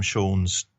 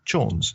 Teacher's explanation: the Cumbrian dialect hardened the sh sound to a ch, which is a classic example of consonantal shift.